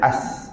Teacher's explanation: So makhraj huruf sin hujung lidah berada di belakang gigi bawah.